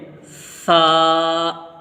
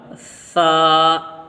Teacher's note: اس میں سیٹی نہیں لگے گی، یعنی ہلکی سی آواز میں پڑھا جائے گا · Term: ثا